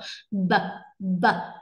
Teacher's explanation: khi mà đưa tay ra sẽ không cảm nhận được cái luồng hơi nào mấy, bởi vì thừa âm thanh nó sẽ ra nhiều hơn rất là nhiều. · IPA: /b/